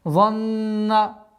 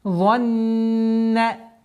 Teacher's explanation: с твердого произношения за нужно уходить на мягкое произношение нун. Занна. Удержание в размере двух огласовок, и нужно обратить внимание, чтобы она произносилась мягче.